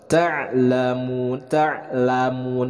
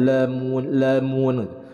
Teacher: dalam pelafalan ain disukunkan, itu harus jelas berasal dari tengah tenggorokan